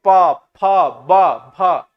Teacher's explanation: ओष्ठ से प, फ, ब, भ, ये पूरा का पूरा ओष्ठ से जा रहा है